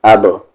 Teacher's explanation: با پہ سکون ہے یعنی کہ جزم ہے قلقلے کے ساتھ، یعنی کہ آواز کو باؤنس کر کے پڑھیں گے